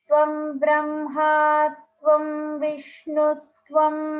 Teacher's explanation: every syllable is the same middle note up until the point when you get to Brahma Bhur Bhuva Suvarom, and then there's the variation, but everything else is just one middle note.